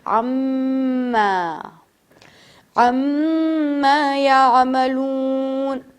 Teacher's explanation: میم کو عَمَّا يَعْمَلُونَ نہیں پڑھیں گے بلکہ تھوڑا سا کھینچیں گے، 2 الف کے برابر۔ عَمَّا عَمَّا يَعْمَلُونَ۔ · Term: غنہ